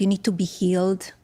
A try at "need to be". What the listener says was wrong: All right, so that's a little bit strong, like on the T's, right? Need to be, instead of need to be.